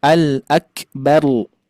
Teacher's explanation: Jangan sampai menjadi lam. Jadi tetap ro-nya ayah bunda harus ditakrirkan atau digetarkan ya ke langit-langit gusi gigi sari atas.